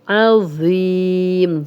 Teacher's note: وَهُوَ الْعَلِيُّ الْعَظِيمُ، عظیم، ذو کو موٹا اور نرم بھی پڑھیں گے اور سی ٹی کی آواز نہیں آئے گی